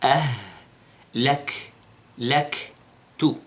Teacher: Notice the sound of the ha, hams, and the sound of the kaf, hams.